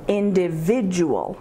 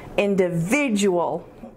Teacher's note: Individual has five syllables. The emphasis is on the third syllable.